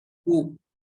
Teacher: Huruf kaf di sini berharokat dhammah, maka harus dimonyongkan bibirnya.